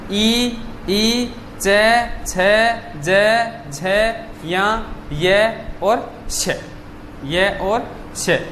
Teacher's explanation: इन सभी ध्वनियों का जो उच्चारण स्थान है वो क्या है, तालु है। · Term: तालव्य ध्वनियां